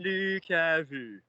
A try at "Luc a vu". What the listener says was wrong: I didn't hear the oo as much in the last one.